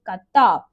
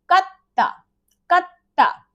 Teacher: there is a space where you take a rest, a beat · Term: double consonants